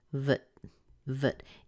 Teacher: the T is kind of held it's like you make the T but you don't push a lot of air out after it so but but and it's going up at the end so